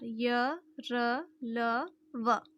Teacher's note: वे व्यंजन जिनके उच्चारण करने में हमारे मुख में जो जिह्वा होती है वो किसी विशेष भाग को स्पर्श नहीं करती, ऐसे वर्णों को अंतस्थ व्यंजन कहते हैं।